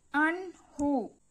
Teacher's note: আইন নুন জবর আন, হা পেশ হু, আন হু, গলায় চাপ দিয়ে আন হু, আন হু। নুন সাকিনের বামে ইজহারের হরফ হা রয়েছে, এখানে গুন্না ছাড়া পড়তে হচ্ছে, সেই জন্য পড়তে হচ্ছে আন হু।